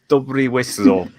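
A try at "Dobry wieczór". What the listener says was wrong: No, you don't say the W. W silent, or it's an L.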